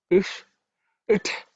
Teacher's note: Okay, it's ish. Okay, it's a cerebral ish. The tongue should be pointed up.